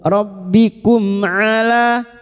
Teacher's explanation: Mim sukun dibaca jelas tanpa mendengung. Rbikum ala huruf ain ala la alif kecil di atas dua harakat mad thobi'i. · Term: idhar syafawi